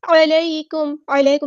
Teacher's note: علیکم، عین کو وسطی لیکن مڈل تھروٹ سے ادا کرنا ہے، یا لین آ گیا تو نرمی سے موڑیں گے